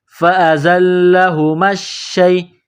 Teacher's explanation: میم کو شین کے ساتھ پلس کرنا ہے، شین میں سختی کرنی ہے، شین یا زبر شی.